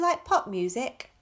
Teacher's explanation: It's a yes-no question, so it's a rising intonation.